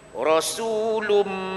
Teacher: Lun tadi dia tak bunyi lun dah. Lum, mim masuk terus dah. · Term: idgham ma'al ghunnah